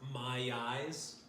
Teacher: If you start the vowel with that closed off throat, it's called a glottal stop because your glottis is closed. It just gives you this aggressive kind of slap there.